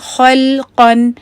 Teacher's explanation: یہ خا ہیوی ہے، لام لائٹ ہے اور قاف پھر ہیوی ہے